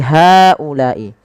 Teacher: Maka pada lafal haulai hanya dipanjangkan 4 harokat karena ia mad jaiz.